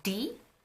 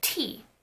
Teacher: You can tell the differences by putting a hand in front of your mouth, say D, and say T. When you say T, you are going to feel that strong burst of air. This means that D is an unaspirated consonant, while T is aspirated. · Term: aspiration